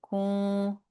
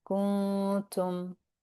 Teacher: We're not letting the tongue touch the noon spot, and we are bringing our tongue and mouth into place to say the ta. So, kun. Now, my my tongue is very close to the ta spot. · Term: ikhfa